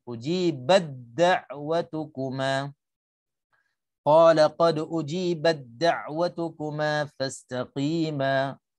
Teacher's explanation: Jadi kita masukkan idgham mutajanisain tanpa ada hams pada huruf ta.